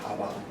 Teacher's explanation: when you're saying the b part, you can feel your throat vibrating